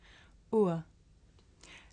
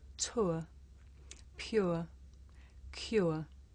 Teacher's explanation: this is a diff thong a double vowel sound the shape the mouth makes changes from the beginning of the sound to the end